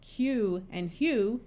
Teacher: Words like Q and hue, you can hear the Y sound of the long U.